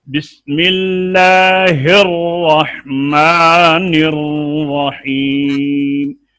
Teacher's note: اس میں شد جو ہے نا اس کے اوپر جماؤ وزن ڈال کر پڑھتے ہیں زبان کا